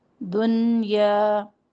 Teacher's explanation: دنیا میں نون ساکن کا مکمل اظہار کریں گے، اظہار مطلق کا قاعدہ ہے